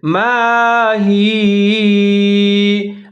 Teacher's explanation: جیسے یبین لنا ما ہی، یا کے اوپر زبر ہے، یہاں پر ہم وقف کرنے کی وجہ سے یا زبر کو ہم یا ساکن کے ساتھ تبدیل کر دیں گے